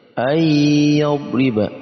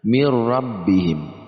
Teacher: Ayyadriba, tapi ini idgham bila gunnah, idgham digabungkan tapi tidak didengungkan